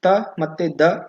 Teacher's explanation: ತ ಮತ್ತೆ ದ ಇವು ದಂತ್ಯ ಧ್ವನಿಗಳಾಗಿವೆ